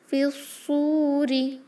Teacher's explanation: را کسرہ کے ساتھ لائٹ ہی ہوگا